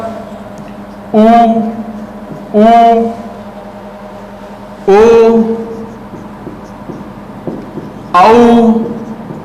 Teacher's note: वृत्ताकार स्वर, होठ जो है गोल रहते हैं